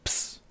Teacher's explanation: In English, the P is silent, but in Greek, you pronounce the P.